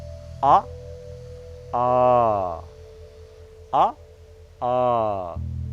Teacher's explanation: Coming from the base without any impeding in the mouth.